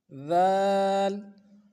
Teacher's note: اگلا ورڈ جو ہے ذال، اس کو بھی نرمی سے پڑھیں گے، اس کا مخرج بھی وہی ہے، زبان کی نوک سامنے والے دانتوں کے سرے سے لگے گا تو ذال ادا ہوگا